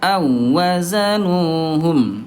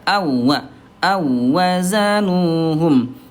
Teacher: Ini huruf wau dia bukan huruf gunah. Jadi, Bunda hati-hati jangan ditahan ya.